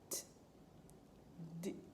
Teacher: the t, it is unvoiced, and the d, it is voiced